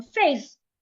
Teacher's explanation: Faith, the tone of my voice goes up.